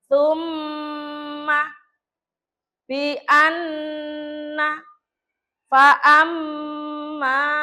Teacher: berarti sebelum mim tasjid itu ee didengungkan dulu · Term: ghunah